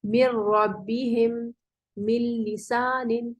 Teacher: کہ جب ہم نون ساکن یا تنوین کے بعد حروف لام یا را میں سے کوئی حرف دیکھیں گے تو نون کا ان حروف میں ایسے ادغام کریں گے کہ نون کی کسی صفت کا اظہار نہ ہوگا, نہ ہی نون کا مخرج لیا جائے گا, بلکہ نون پوری طرح مدغم ہو جائے گا, ملا دیا جائے گا, یعنی غائب ہی ہو جائے گا ایک طرح سے. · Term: بلا غنہ